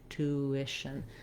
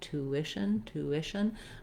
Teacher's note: or the did vowel um going from that ooh to the my mouth does naturally do a little bit of a glide from the round rounded shape to the unrounded shape